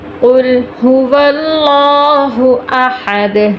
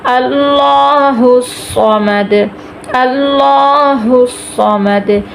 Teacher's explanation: لفظ اللہ موٹا کریں گے کیونکہ اس کے پیچھے زبر آ گئی ہے